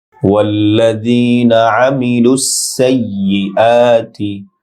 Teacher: মিলুস লাম সিনের সাথে যুক্ত হবে, টান নেই। সাইয়্যি সিন ইয়ার সাথে শক্তভাবে উচ্চারণ হবে, এক আলিফ লম্বা হবে।